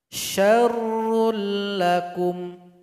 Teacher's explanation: mesti dilebur digabung kepada huruf lam ini dan tidak boleh didengungkan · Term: idgham bilagunnah